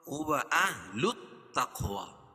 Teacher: قاف پر قلقلہ، کیوں کہ قاف حروف قلقلہ کے 5 حرفوں میں سے جب ان پر جزم ہو تو وہاں قلقلہ ہوگا